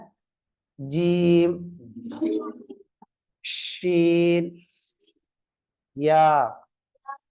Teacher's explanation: நாவின் நடுப்பாகத்திலிருந்து வெளியாகக்கூடிய மூன்று எழுத்துக்கள்